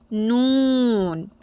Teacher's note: জিহবার আগার কিনারা সামনের উপরের ছয় দাতের মাড়ের গোড়ার সাথে লাগিয়ে উচ্চারিত হবে নুন